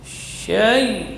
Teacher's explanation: Syai mengalir di situ. Karena ya huruf rakhawah